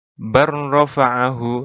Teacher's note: cara membacanya adalah dengan mengabaikan huruf pertama dan membaca huruf kedua secara tasydid, bertasydid. Jadi dipantulkan, ditahan lalu dikeluarkan, seperti itu. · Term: idgham mutaqarribain